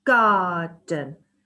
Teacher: the second syllable in garden is unstressed because it is quieter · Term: unstressed last syllable